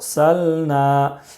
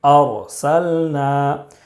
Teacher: را ساکن سے پہلے زبر ہے اس لیے را کو پر پڑھیں گے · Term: رائے ساکنہ